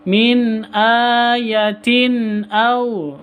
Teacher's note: Tanwin bertemu dengan hamzah juga izhar halki, bacanya harus jelas